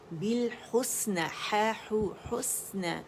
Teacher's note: سین میں رخاوہ ہے، سین باریک ہے